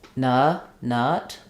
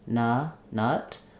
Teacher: So when I'm saying nut, my tongue is resting at the bottom of my mouth, but it's pretty relaxed and my mouth is not very open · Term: schwa